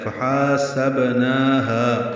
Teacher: ہا الف مدہ ہے، 2 حرکات لمبا کریں گے، با ساکن پہ قلقلہ ہے